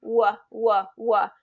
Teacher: it's all with the lips and not with the tongue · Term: W sound